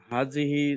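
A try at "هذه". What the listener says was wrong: হাজিহি না, হাদিহি, হাদিহি দাল, হ্যাঁ হাদিহি উচ্চারণ সুন্দর করতে হবে। হাজিহি না, হাদিহি দাল, হাদিহি।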